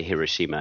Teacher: to try and put the equal emphasis on each syllable, which is very hard for us Westerners used to emphasizing, the second or third syllable in a word.